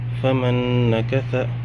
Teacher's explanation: فا زبر فا میم نون زبر من میم نون زبر من فمن نون زبر نا کاف زبر کا ثا زبر ثا فمن نکث. یہاں پہ بھی ادغام مع الغنہ ہوگا، نون ساکن کے بعد نون آ رہا ہے